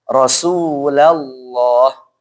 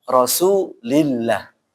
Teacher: lafaz Allah sebelumnya kasrah maka dibaca apa? Tipis atau tarqiq